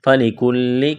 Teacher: کاف کو لام کے ساتھ ملانا ہے. لام میں سختی کریں گے